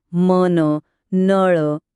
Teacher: न म्हणताना आपली जीभ सरळ दाताना लागते हा एक मृदू आवाज आहे